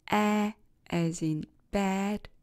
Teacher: the tongue position and the quality of the vowel stay constant during the production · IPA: /æ/